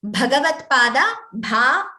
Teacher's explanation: Bhagavat Pada, Bha, the Mahaprana should be clearer.